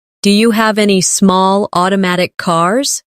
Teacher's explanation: Do you becomes dia.